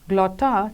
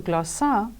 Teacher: by other greek dialects in a process of leveling for example the attic consonant cluster the geminated t changed to a geminated s of the majority of dialects as in glotta changing to glossa which means tongue or language